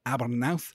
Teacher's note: the AU diphthong there giving us an ow as in how